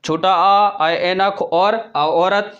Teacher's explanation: अर्धविवृत जिनको बोलने में हमारा मुख द्वार आधा खुलता है।